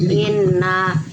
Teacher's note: Inna gunnah musyaddadah, nun tasdid dengung 3 harokat